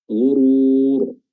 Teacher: ghurur mat arid disukun, kita baca 4 harakat